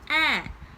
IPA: ɛ